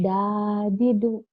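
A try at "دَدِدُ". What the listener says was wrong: Jadi tuh ya, yang ada alifnya itu yang panjang. Kamu masih kadang-kadang yang nggak ada alifnya kamu panjangin nih ya.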